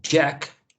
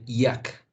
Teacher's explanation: the affricate jet and you have the glide